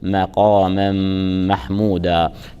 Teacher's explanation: ونون التنوين في مقاما جاءت متبوعة بحرف ميم متحرك، تدغم نون التنوين اللفظية الساكنة بحرف الميم وتلفظ ميم مشددة مع مراعاة الغنة، غنة من المرتبة الأولى، غنة أكمل ما تكون، فنقول مقاما محمودا.